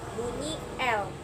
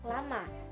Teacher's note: bunyi l ciri-cirinya hidup oral apiko alveolar